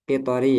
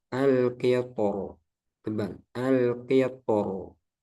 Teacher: Terus di sini ada catatan huruf ro pada kata al-qitor di surah Saba dibaca talqiq al-qitor ketika wasal dan tafkhim ketika waqaf menurut pendapat yang lebih kuat. Jadi ketika wasal dibaca tarqiq dan tafkhim ketika waqaf. Jadi ini qitori ya, kasroh.